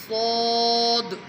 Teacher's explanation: سیٹی کے ساتھ موٹا پڑھنا ہے اسے